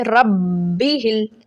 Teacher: اس کو سختی سے اور رک کر دباؤ دے کر پڑھا جاتا ہے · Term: مشدد